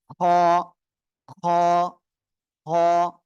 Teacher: এই অক্ষরটা উচ্চারণ হবে গলার শেষ ভাগ থেকে